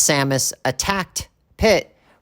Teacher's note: we use the T sound because the K in attacked Can't Be Sung